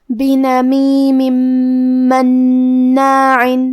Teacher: اگر ہم یہ آیت کو اگلی آیت کے ساتھ ملا کے پڑھے تو حرف المیم کلمت مناع میں حروف الادغام میں سے ہے، تو ہمیں یہ حکم کو غنہ اور تشدید کے ساتھ ادا کرنا ہے. بنمیم مناع.